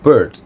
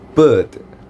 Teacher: For example, like the word of bird. But when I use the British accent, it will become bird without an R.